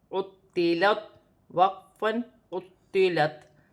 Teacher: تا مشدد ہے، موٹا بھی ہے، اپنے مخرج سے ادا ہوگا، عین بھی اپنے مخرج سے ادا ہوگا، عین حروف حلقی میں سے ہے